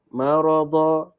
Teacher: Ra di sini tebal sebab dia berbaris atas.